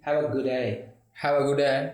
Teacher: दो डी, एक डी बनाया, जो डी खत्म हो रहा है और डी शुरू हो रहा है. गुड का डी खत्म, डे का डी शुरू, एक डी.